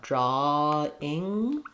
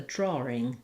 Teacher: drawing with nothing between the a and the ing